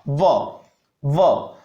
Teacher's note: ऊपर वाले दांत नीचे वाले होठ से स्पर्श करते हैं, तब उच्चारण होता है व का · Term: दंतोष्ठम